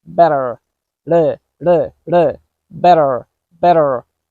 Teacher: it's not like a strong D sound but a fast D sound